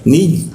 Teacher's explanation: ketika bertasdid dia lidahnya terangkat sehingga rongga udara terkunci dan menimbulkan tekanan